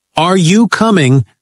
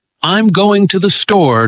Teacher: Questions like, Are you coming? lift up at the end. Statements like, I'm going to the store, drop down, giving it a grounded feel. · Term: Intonation